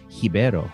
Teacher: in Portuguese the R sounds like an H